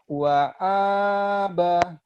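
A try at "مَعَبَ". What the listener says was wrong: Lihat baik-baik. Ma itu ya bukan wow. Jangan ada haknya.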